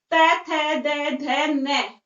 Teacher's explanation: तो हमारी जीभ कहाँ टच होती है? दांत पर टच होती है